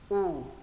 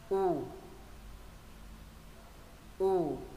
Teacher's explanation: Chữ U thứ nhất mình sẽ bẹt môi xuống mình phát âm. U. Chữ này thì không hạ cằm, chữ này phải bẹt môi xuống.